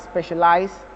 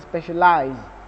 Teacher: the last syllable of those words are going to sound differently because one is voiceless, the British is voiceless, and the Americans is voiced